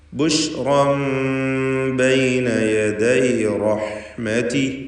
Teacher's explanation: ബുഷ് റാഹിനെ തഫ്ഖീം ചെയ്യണം, തടിപ്പിക്കണം. റാഹിൻ്റെ തൻവീൻ ഇഖ്ലാബ് ചെയ്ത് ശേഷം ബാ വന്നതുകൊണ്ട് ഇഖ്ലാബ് ചെയ്ത് മീമാക്കി മാറ്റി മണിച്ചുകൊണ്ട് ഉച്ചരിക്കുക.